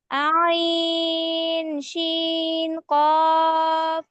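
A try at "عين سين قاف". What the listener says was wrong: সিন না, এটা সিন। আইন, সিন, কফ।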